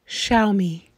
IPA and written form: ˈʃaʊmiː (Xiaomi)